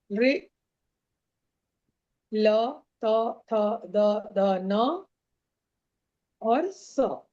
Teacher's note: दांत में आपका जीभ सटेगा ही सटेगा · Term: दंत्य वर्ण